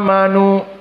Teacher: pertama amanu maka tiga pilihan qasr tawassut dan juga al-isba namun kebanyakan para qura memilih al-isba maka dipanjangkan amanu